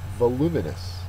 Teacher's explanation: voluminous is an adjective second syllable is accented